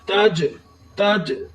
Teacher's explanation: آگے پھر تا کے اوپر زبر ہے، تا بغیر تا کے اوپر زبر ہے، تا کو بغیر کھینچے پڑھیں گے، تا کا لفظ ویسے ہی ادا ہوتا ہے جیسے ہم حروف تہجی کے اندر کرتے ہیں۔ جیم ساکن ہے اس لیے تا کو جیم کے ساتھ ملائیں گے